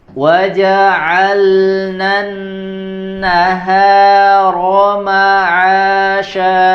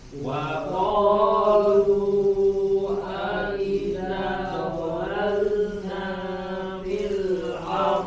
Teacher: jelaskan di huruf lamnya tidak melebur ke huruf nun yang ada di depannya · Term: huruf lam dengan sukun